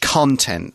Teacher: when it's a noun, we pronounce it content. The stress is on the first syllable.